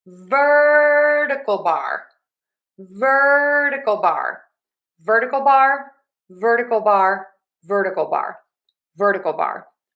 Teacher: we are going to stress syllable number one in ver and then we have a schwa du bar. So, we have vertical bar vertical bar, vertical bar, vertical bar, vertical bar, or pipe.